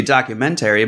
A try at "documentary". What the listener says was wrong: Think you're putting the wrong emphasis on the wrong syllable.